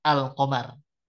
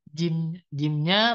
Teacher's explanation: ketika alif lam ya bertemu dengan huruf q di mana Ini huruf q ini huruf Qariah maka dia lamnya tetap dibaca jelas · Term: izhar Qariah